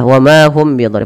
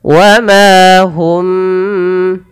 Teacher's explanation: Wa ma mad tabi'i, hum tahan mimnya ketika bertemu ba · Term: ikhfa syafawi